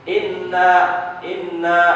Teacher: Nun dan mim yang bertasdid harus dibaca gunah · sifatnya adalah ditahan bukan cuman dengung tapi ditahan